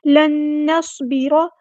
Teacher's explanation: سواد ہمارا heavy letter ہے، پورا ادا کریں گے، اور سیٹی بھی آئے گی،